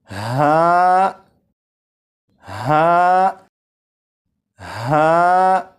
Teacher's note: ہا حلق کے نیچے والے حصے سے ادا ہوتا ہے، اور جب اسے پڑھیں گے تو آواز ذرا بھاری ہو